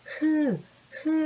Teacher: 여기 목 쪽에서 공기가 나오면서 조금 거슬리면서 이제 나오는 느낌이 들죠. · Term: 목청 소리